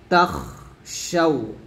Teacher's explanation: তাখ শাউ, তাখ, এই খটা কিন্তু বাতাস বেরোবে, খর উপর যখন সাকিন আসবে তখন বাতাস বের করতে হবে। তাখ শাউ।